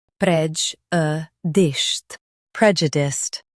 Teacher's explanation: Emphasize prej and soften u-diced.